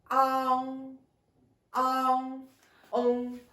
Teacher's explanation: À l'arrière de la langue, on monte pour que l'air sorte par nez. En, on prononce d'abord comme E et faites attention la forme de la langue et la partie de prononciation. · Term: voyelles nasales postérieures